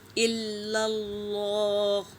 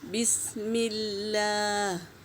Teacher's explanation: اللہ کے نام سے پہلے زبر ہے تو اللہ کا نام پر ہوگا